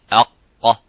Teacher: As soon as you say, make the sukun and make that sound of aq, you can see how the sound is cut. There is no air coming out, and it's a full mouth. It's not an empty mouth. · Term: qaf